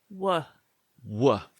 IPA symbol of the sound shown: w